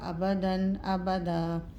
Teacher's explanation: یہاں پر غنہ نہیں کریں گے، اظہار ہوگا